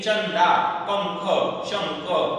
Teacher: इनका उच्चारण नाक से होता है, अनुसार के बारे में पढ़ रहा हूं मैं। इनका उच्चारण नाक से होता है, यह न या म के समान होता है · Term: अनुस्वार